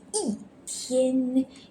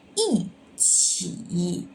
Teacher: We need to change the E to fourth tone